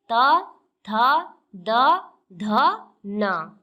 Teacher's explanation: इसके बाद है दंत। दंत, दांत और जीभ के स्पर्श से बोले जाने वाले वर्ण